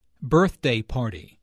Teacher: the normal stress for a compound noun falls on the first element of the compound